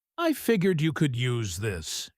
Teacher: her tone easy and casual, the kind of relaxed, gentle falling tone that signals comfortable familiarity between two people who no longer feel any need to perform politeness with each other.